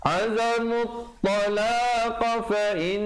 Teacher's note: didengungkan di situ dua harakat, wajibul gunnah